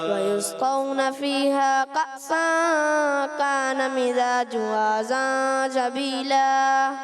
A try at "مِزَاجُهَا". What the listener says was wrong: مزاجها زا کی ادائی کلیئر کرنی ہے. وَيُسْقَوْنَ فِيهَا كَأْسًا كَانَ مِزَاجُهَا زَنْجَبِيلًا.